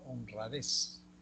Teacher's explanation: en la palabra honradez, la sílaba tónica está en la última.